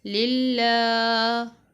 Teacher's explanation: لام کو لمبا کیا کھڑی زبر کی وجہ سے